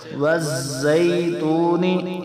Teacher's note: زا سیٹی والا حرف ہے، سکتے سے پڑھیں گے